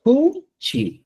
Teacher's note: Tú tienes que hacer una ligera exhalación de aire, como en la palabra cuchi, produciendo un sonido aspirado